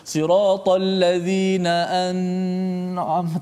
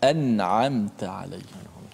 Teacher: Kerana huruf izhar dan nun mati itu dia huruf yang berjauhan. Jadi kita kena baca dengan jelaskan nun mati tanpa boleh kita memanjangkan.